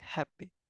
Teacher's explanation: the first syllable is strong and the second syllable is weak